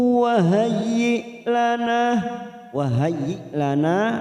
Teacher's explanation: na fathah diikuti alif 2 harokat · fathah tanwin bertemu wawu idgham bi guna. Kita tekan 3 ketuk